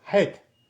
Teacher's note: But the het, right, is in the throat.